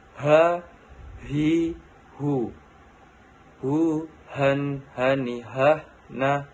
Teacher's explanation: Melafalkan huruf H, huruf ini keluar dari tenggorokan yang terjauh.